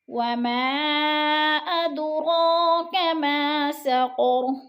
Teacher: اد پہ قلقلہ ہو رہا ہے، دال ساکن ہے اور دال حروف قلقلہ میں سے ہے تو اس کو ہلا کر پڑھیں گے یعنی لمبا کر کے کھینچ کر پڑھیں گے۔